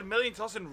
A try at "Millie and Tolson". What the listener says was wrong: It sounded like a million.